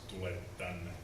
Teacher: we write tule tänne with one T, although we pronounce tule tänne with a long T sound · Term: predictive gemination